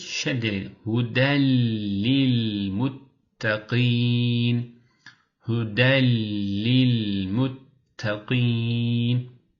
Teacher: Buradaki hudendeki eee n kelimesi vardı ya bunu lam yani la'ya çevirdik. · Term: idgam bilaunne